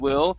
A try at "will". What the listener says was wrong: you're ending with an oo sound saying C and will okay just remember it's not a lip movement it's a tongue movement